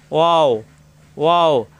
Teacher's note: নুন, জিহ্বার আগা উপরে তালুতে লাগবে, নুন নুন। ওয়াও, 2 ঠোঁট থেকে উচ্চারণ, 2 ঠোঁট মিলবে না,